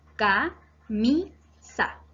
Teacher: Es grave porque su acento está en la penúltima sílaba, que corresponde a la sílaba mi, que está destacada.